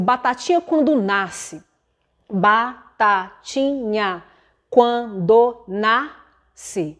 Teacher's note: A palavra nasce é uma palavra paroxítona, então a sílaba tônica está no nas, o C não conta. A última sílaba contada dentro de um verso é a última sílaba tônica.